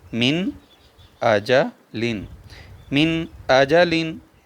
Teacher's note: نون ساکن کے بعد حمزہ آ گیا ہے تو یہاں پر اظہار ہوگا، یعنی غنہ نہیں کریں گے۔ اس کو پڑھیں گے من آجا لن، من آجا لن۔